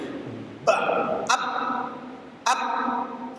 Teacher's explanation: sifatnya suaranya siddah, dia tertahan kuat di makhrajnya. Ba, ab, gak ada suara tambahan.